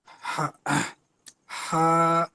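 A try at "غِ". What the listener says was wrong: হা নয়।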